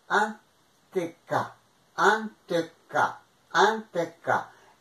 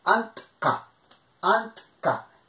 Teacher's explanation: Es la E prostética que se añade como un sonido para aligerar la unión de dos consonantes que es una, no se podrían casi pronunciar.